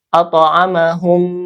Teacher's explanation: dibaca ee diidgamkan ya di masukkan langsung ke mim kedua kemudian digunahkan ditahan dua harakat ya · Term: idgam mimi